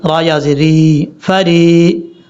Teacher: را کے بعد جو یا ہے یہ یا مدہ ہے، اس کو لمبا کریں گے